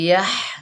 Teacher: हा हलक के दरमियान से अदा करेंगे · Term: बड़ी हा